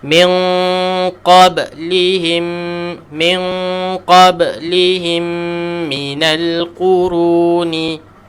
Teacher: Dan matikan huruf ba selepasnya qalqalah.